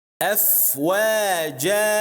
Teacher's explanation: If the word ends with a tanween of fath, then we stop with alif